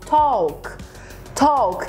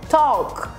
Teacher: o ta é seguido do l k são duas consoantes então eu não falo take não é o som de e é o som de o